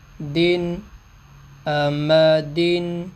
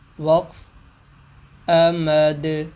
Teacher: تو یہ دو زیر والے حرف پہ وقف کیا تو دو زیر کو ساکن، یعنی دو زیر والے حرف کو ہم نے ساکن کر دیا، دو زیر کو وقف کی صورت میں ختم کر دیا۔